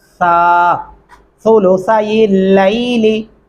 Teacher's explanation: ثلثا دونوں سا نرمی سے ادا ہوتے ہیں. دانتوں کے نیچے زبان کی نوک آ جاتی ہے.